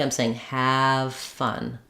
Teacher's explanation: So it's almost like I'm saying have fun with no V sound, just an F sound. But keep your ah sound long.